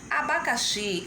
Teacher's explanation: a sílaba mais forte dessa palavra abacaxi é o xi. Então, se a sílaba mais forte é o xi, então ela vai ser escrita com I.